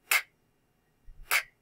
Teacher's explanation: It's just hanging out back there, and the back of my tongue is actually what's working. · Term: k sound